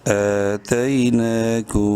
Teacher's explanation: میم ساکن کے بعد با ہے، اس میم میں غنہ کریں گے